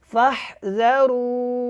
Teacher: यहाँ पे जिम का वक्फ़ जायज़ है, आपने हा को पीछे रा और वाव के साथ मिला के पढ़ देना है, वक्फ़ करना है, इसकी पेश को ख़त्म कर देना है